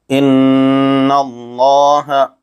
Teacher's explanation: جیسے ان اللہ، جیسے ہی ہونٹ کو گول پڑھتے وقت گول کریں گے تو یہ پر ہو جائے گا۔ لفظ اللہ کے لام پر کھڑا زبر ہے، اس کو علی مدہ کی طرح تھوڑا کھینچ کر پڑھنا چاہیے